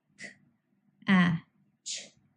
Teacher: The a sound was voiced because all vowels are. K and ch are unvoiced consonant sounds because they did not involve any vocal cord vibration to produce.